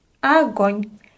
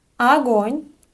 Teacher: we have unstressed O here, so we pronounce it as a